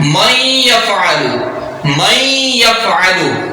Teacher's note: اب نون کو ہم نے یا میں مدغم کر دیا غنے کے ساتھ